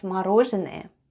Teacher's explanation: The first sound is m, then goes o. It's unstressed and is pronounced as a. Then goes r, o. · Then goes n, o, which is again unstressed and pronounced as a